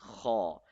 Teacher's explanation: Ha comes from the top throat. It should be hard. It should be scratchy.